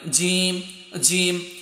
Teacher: জিমটা উচ্চারণ হবে তোমার জিহ্বার মাঝখানটা উপরে তোমার তালুতে গিয়ে লাগবে, জিম জিম। এটা সবচাইতে শক্ত হরফ।